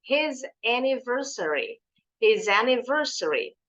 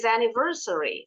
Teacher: nih kalau pelan-pelan bacanya Anya kedengaran nih his anniversary his anniversary Tapi kalau ngomongnya cepat Hnya nih suka dibuang kalau sama penutur asli Bahasa Inggris